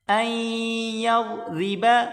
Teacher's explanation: ضاد کو موٹا کریں گے، را کو باریک کر کے پڑھیں